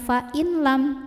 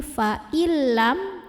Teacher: nun sukun lebur atau masuk ke lam tanpa berdengung jadi Artinya kita bacanya bukan Vain lam tapi faillam tekan lamnya · tekan lamnya tapi tanpa ditahan. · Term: idgham bilagunnah, idgham bila gunnah